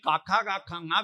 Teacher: കണ്ഠത്തിൽ കാക്കാ കാക്കാങ്ങ വ്യഞ്ജിപ്പിക്കുന്നത് കണ്ഠ്യം.